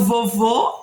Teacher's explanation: E no vovô eu tenho um som mais fechado